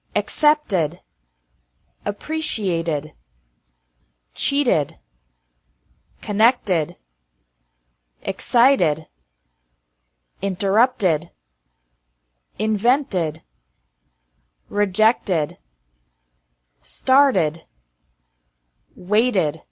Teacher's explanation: The second pronunciation of ed is like ed with an extra syllable after verbs ending with a t or d sound.